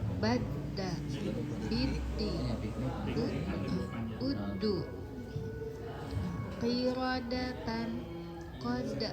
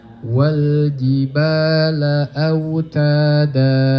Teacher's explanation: Dibacanya tipis. Sebab apa? Sebab lidahnya tidak terangkat ke langit-langit. Relax lidahnya.